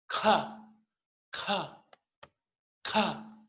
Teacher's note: seguimos con la consonante K, posvelar, aspirada.